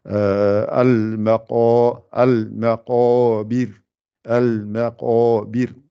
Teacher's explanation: Il ne faut pas que le qa influence le mime qui est juste avant. Et le ba et le ra aussi ne doivent pas être influencés. · le ma n'est pas gonflé, il n'y a que le qa qui est gonflé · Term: gonfler le qa